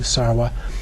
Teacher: in Sanskrit it would be sarva with a V but the Tibetans pronounced it with the W